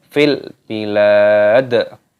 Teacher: Fil bilad, lamnya panjangkan, dan dalnya di sini ketika waqaf berhenti maka dimatikan dan ditambah dengan qalqalah ataupun pantulan suara.